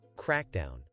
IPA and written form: ˈkrækˌdaʊn (crackdown)